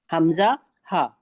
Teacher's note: ये वाली देखिए, ये वाली ऊपर छोटी हा और हमजा, ये हलक के सीने वाले हिस्से से यानी आखिरी हिस्से से अदा होते हैं